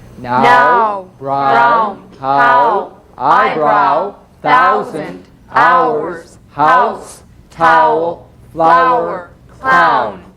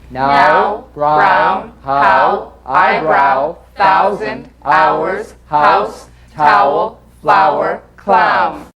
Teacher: another diphthong a combination of the largest lip opening number five ah with the smallest number one ooh again using that quick American Glide oh oh oh oh no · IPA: /aʊ/